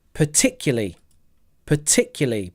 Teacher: 4 syllables. Particularly. Stress is on tick.